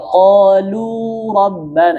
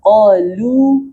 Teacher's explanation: Biasanya lu banyak juga orang kadang terbal-tebal pada lafaz qolu biasanya baca qolu rabbana itu munya tebal harusnya qolu tipis qo qonya tebal lamnya tipis